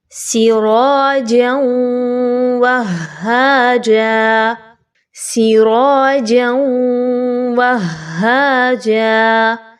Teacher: چونکہ واو کے اوپر بھی تشدید کی علامت ہے اور پھر ہا کے اوپر بھی تشدید کی علامت موجود ہے، تو آپ نے پہلے تو جیم اور واو کو مضبوطی کے ساتھ ملانا ہے، اس کے بعد واو اور ہا کو آپس میں مضبوطی کے ساتھ ملانا ہے. بہت سے لوگ یہاں پہ بہت نرمی کے ساتھ پڑھ دیتے ہیں، جس کی وجہ سے یہ لفظ غلط پڑھا جا رہا ہوتا ہے.